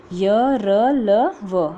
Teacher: इन व्यंजनों का उच्चारण करते समय जीभ पूरी तरह से उच्चारण अवयवों को स्पर्श नहीं करती है। जैसे स्पर्श व्यंजन के अंदर तो अलग अलग स्थानों को टच करती थी, लेकिन इसके अंदर क्या है, पूरी तरह से टच नहीं करती है, तो वो अंतस्थ व्यंजन होते हैं।